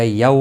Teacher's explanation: یو واولین ہے، تھوڑا نرمی کے ساتھ کھینچ کر ادا کریں گے